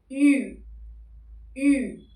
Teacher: French U is tighter sound from lips.